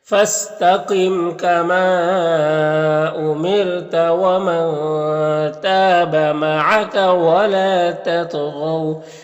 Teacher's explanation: یہاں پر واو لین ہے، اسے نرم آواز کے ساتھ جلد پڑھیں گے